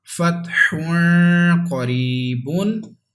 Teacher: This word will be read with ikhfa because there is ikhfa letter after tanween. That's why we have to read with gunna.